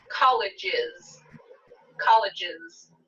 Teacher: college ends with j one of our buzzing sounds so i'll add the syllable is